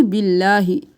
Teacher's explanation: آمنا باللہ، اللہ کا لفظ موٹا باریک پڑھیں گے کیونکہ اس کے پہلے والے حرف پر زیر ہے. باللہ نہیں کریں گے، باللہ.